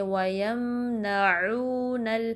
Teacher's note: وَيَمْنَعُونَ میم بھی کلکلا نہیں کرنا، یمنعو ایسے نہیں بلکہ وَيَمْنَعُونَ عین کو وسط الحلق سے ادا کریں گے